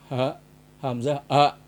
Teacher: Ini hamzah a, adanya di tenggorokan bagian pangkal